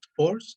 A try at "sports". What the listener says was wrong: Just remember to connect the S without adding an E, and it will sound better with sports, not with sports.